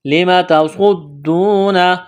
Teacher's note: سواد کو موٹا کرنا ہے، سیٹھی کی آواز پیدا کرنی ہے. دال میں سختی کریں گے، واو مدہ ہے، الف کے برابر کھینچنا ہے.